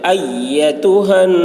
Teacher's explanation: حمزہ کو یا سے سختی کے ساتھ ملائیں گے